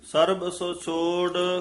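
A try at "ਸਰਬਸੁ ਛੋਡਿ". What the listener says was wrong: ਸਰਬਸ ਛੋੜ ਪਾਠ ਇਕੱਠਾ ਹੀ ਹੈ। ਸਰਬਸ ਛੋੜ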